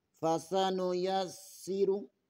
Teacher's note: یا زبر کو سین کے ساتھ ملانا ہے، سین میں شدد ہے، اسے 2 دفعہ پڑھنا ہے، اور سین کا مخرج ادا کرتے ہوئے سیٹی کی آواز نکلنی چاہیے۔ فَسَنُيَسِّرُ ہا کے اوپر الٹا پیش ہے، اسے بھی ایک الف کے برابر کھینچنا ہے۔